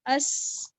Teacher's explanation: میری آواز میں کوئی جھٹکا نہیں ہے بلکہ کنٹینویشن ہے، جو کہ ہمس کے ساتھ بھی ہم نے اس کو ریلیٹ کیا. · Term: اسمات